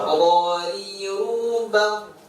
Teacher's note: Dia ujungnya saja, bukan seluruh bagian lidah kita yang bergetar. Ujungnya saja. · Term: takrir